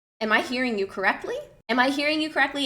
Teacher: So you can even literally repeat word for word, and then just have a rising intonation at the end